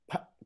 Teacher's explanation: اب ان کو بولنے سے پہلے جب میں نے پ کہنا ہے تو اس میری انیشیل پوزیشن پہ میرا ماؤتھ بالکل بند ہے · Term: سٹاپس